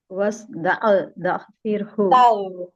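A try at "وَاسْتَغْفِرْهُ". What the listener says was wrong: நம்ம வாய்க்குள்ள தண்ணி ஊத்தி காகுல் பண்ணுவோம்ல, ரைன் ரைன் வஸ்தாக் வஸ்தாக்ஃபிர் ஃபிர் ஃபிர் ரா வந்து லைட்டா ஓதணும். ஃபிர் ஃபிர் ஐன் வந்து கரெக்டா வரல, சாரி ரைன் வந்து கரெக்டா வரல. வஸ்தாக்ஃபிர்ஹு கீ சொல்வீங்கல்ல, கீ நெய் கீ கீ அத இன்னும் கொஞ்சம் வைப்ரேஷனோட சொன்னீங்கன்னா ரைன் வரும். வஸ்தாக்ஃபிர்ஹு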